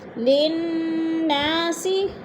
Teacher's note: نون پہ غنہ ہے، سختی سے جما کر پڑھیں گے کیونکہ نون مشدد ہے، اور نا پہ الف مدہ ہے.